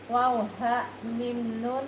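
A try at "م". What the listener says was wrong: Mim, bukan min. Mim.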